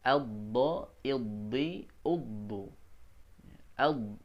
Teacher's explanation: Ya, albo, ildi, uddu. Alb, ketika kita sukunkan hurufnya alb, maka terasa dari sisi lidah yang bertemu dengan geraham atas. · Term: dot